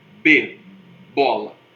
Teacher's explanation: Os lábios ficam juntos, né? É uma bilabial.